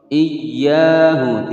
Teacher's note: Iyyahu ditekan, tidak boleh didengungkan. Iyya panjang 2 ketukan matobi'i karena di sini ada alif sebelumnya fathah.